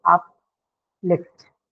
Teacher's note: So that is stress on the second syllable.